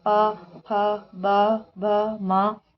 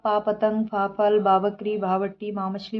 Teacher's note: जब हम इन 5 वर्डों को बोल रहे हैं तो जो हमारे ओठ हैं उनसे ही आवाज़ आ रही है। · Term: ओष्ठ